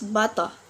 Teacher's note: in British English will not pronounce the r letters